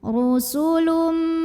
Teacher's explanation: Huruf ra dibunyikan secara tafkhim karena ra-nya berbaris di atas, barisnya dhammah. Maka bacanya tebal, pangkal lidah kita dinaikkan.